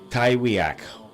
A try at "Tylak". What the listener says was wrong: It's pronounced Tylak. The W is silent.